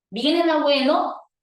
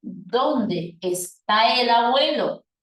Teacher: cuando yo tengo una pregunta total que me brinda como respuesta concreta o sí o no, el tipo de tono que va a presentar esa oración será un tono de tipo ascendente, porque siempre habrá tono ascendente cuando las respuestas a las preguntas sean sí o no, pero será descendente en el resto de los casos.